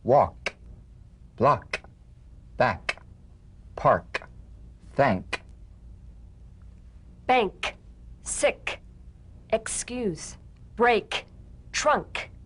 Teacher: With the tongue in the G position, let the tongue spring away in the soft, unvoiced click of the K drum beat. Feel a crisp tap and a pulsation in the back of the tongue.